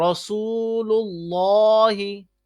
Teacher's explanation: رسول اللہ پیش آ گئی تب بھی موٹا پڑھنا ہے